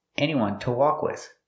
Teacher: To is pronounced tuh because it's not stressed.